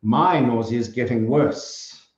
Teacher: stress on the my there